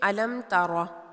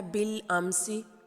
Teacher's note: تو میم ساکن کے بعد اگر باقی بچے ہوئے 26 حروف میں سے کوئی حرف آ جائے تو وہاں پر میم ساکن پر ہم نے غنہ نہیں کرنا، بلکہ میم ساکن کو ظاہر کر کے واضح کر کے اس کے مخرج اور صفات کے ساتھ ادا کرنا ہے